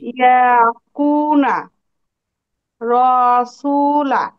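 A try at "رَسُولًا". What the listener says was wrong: রসুলা, রয়ে একটু টান পড়েছে, আমরা টানটা দিব না। রসুলা।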